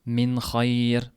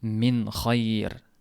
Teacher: Lekin bu ikkalasida aniq bildirib izhor qilib o'qilindi.